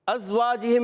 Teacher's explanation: ازواجہم میں از، زا کی ادائیگی کلیئر رکھیں گے، سیٹی کے ساتھ ادا کریں گے